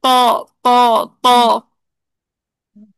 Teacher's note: ٹھیک ہے، فیل بھی کر کے دیکھیں، طا، طا، طا میں دیکھیں اب اکثر لسان کو بھی آپ بلند کریں، وسط اللسان کو بھی بلند کریں، اور طا کا مخرج کیا ہے؟ طرف اللسان، تو تقریباً آپ کی زبان تالو سے لپٹ گئی